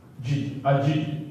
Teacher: semasa menyebut hurufnya, suara tertahan disebabkan tekanan yang kuat pada makhrajnya. Hurufnya 8 terhimpun dalam rangkai kata ajid, qatin, bakat. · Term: huruf-huruf syiddah